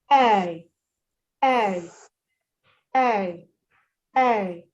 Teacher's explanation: So what you're doing with the A is gliding from E to A without pausing. You don't pause.